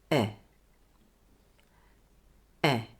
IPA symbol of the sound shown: e